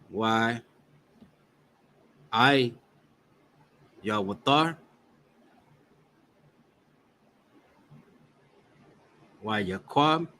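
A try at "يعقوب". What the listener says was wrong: No, it's just Yaikwab. There's no wa there.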